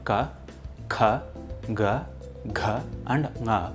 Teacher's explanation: all the consonants of ka varga, which are ka, kha, ga, gha and nga, start from the pit of the throat. Notice that the last sound nga is uttered with the help of the nose.